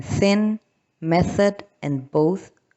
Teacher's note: now we have the interdental fricatives, and the voiceless is th